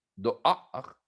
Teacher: Dans le mot doar, le aleph est une consonne, on arrête un arrêt glottal, un arrêt aleph, doar, sous laquelle apparaît la voyelle patach.